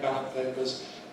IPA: ˈbæləp ˌpeɪpəz